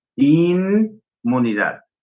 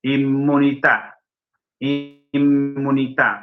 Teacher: Acá la M no ejerce influencia sobre la N.